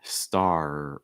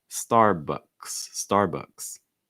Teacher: Starbucks, Starbucks. Also make sure you pronounce that R, star, back of your tongue high, front of your tongue curling up. Starbucks, Starbucks.